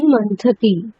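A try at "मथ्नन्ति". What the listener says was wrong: মথনান্তি, মথনান্তি, আগে থ তারপরে ন, মথনান্তি। না, মথনান্তি করতে হবে, মথনান্তি, রূপটা এরকম হয়, মথনান্তি।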